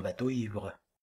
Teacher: Vous voyez qu'il y a un hiatus dans bateau ivre. La diphtongue de bateau crée un hiatus avec l'i initial de l'adjectif ivre.